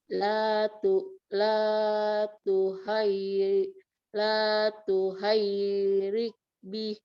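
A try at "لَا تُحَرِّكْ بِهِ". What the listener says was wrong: Itu huruf ro langsung, nggak ada huruf ya. Oke, roknya bertasdid sekarang. Coba roknya bertasdid gimana?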